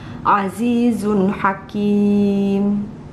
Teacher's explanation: Cara membaca nun mati atau tanwin jika bertemu dengan salah satu huruf izhar harus dibaca terang atau jelas dengan berbunyi N dan tidak berdengung. Nah, ya sekali lagi dijelasin bahwa nun mati dan tanwinnya itu dibaca jelas, masuk ke dalam huruf izhar, dan huruf izharnya juga jelas ya.